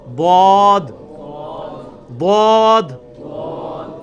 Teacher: ضاد یعنی لیفٹ زبان کا کنارہ اوپر کے دانتوں کی جڑ میں لگانا ہے, یا دونوں کو پیرلل میں دونوں کو بھی لگا سکتے ہیں.